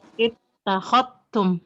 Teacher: Kalau Warsh langsung idgham, lidahnya langsung ketak, zalnya dianggap tidak ada ya, sehingga menjadi tak bertasydid. Ittakhadtum langsung gitu.